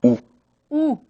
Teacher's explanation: La U son labios redondeados